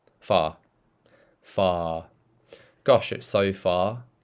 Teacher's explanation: when I'm saying British far, look, it's just on the bottom. There's no curling, it's just relaxed.